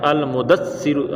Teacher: دال کو سا سے سختی سے ملاتے ہیں